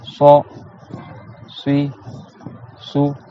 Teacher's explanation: Donc le bout de la langue, il reste comme un S normal, sauf que l'arrière de la langue, il va se bomber vers le haut. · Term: le sod